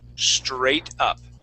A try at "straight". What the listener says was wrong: Remember, you want to push your tongue down. Okay, so it's not hitting the top of your mouth.